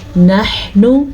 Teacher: ہا کے تلفظ کا دھیان رکھنا ہے اور اس نون کو لمبا نہیں کرنا کیونکہ نون پیش نو ہے.